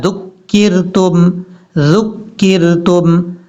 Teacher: ذال کو بغیر سیٹی کے ساتھ پڑھنا ہے، سیٹی کے ساتھ نہیں پڑھنا